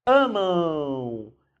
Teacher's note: quando termina em M, nós temos um ditongo nasal